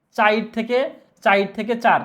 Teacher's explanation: শব্দের মাঝখান থেকে একটা স্বরধ্বনির লোপ ঘটবে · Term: মধ্য স্বরলোপ